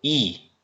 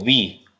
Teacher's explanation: 입술 모양이 동그래지신 게 느껴지시나요?